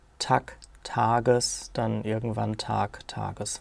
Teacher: Und dann hat man in Analogie, damit alle Stämme des Wortes gleich sind, das sind keine bewussten Prozesse, sondern das sind Prozesse, die sich einfach sprachhistorisch so ergeben. Dann hat man in Analogie auch im Nominativ, wo die Silbe geschlossen war, trotzdem diesen Vokal gedehnt, sodass aus Tag, Tages dann irgendwann Tag, Tages wurde.